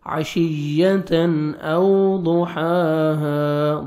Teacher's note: تنوین کے بعد دیکھیں حروف حلقی میں سے حمزہ آ رہا ہے، یہاں پہ آپ نے اظہار کرنا ہے، جلدی پڑھنا ہے.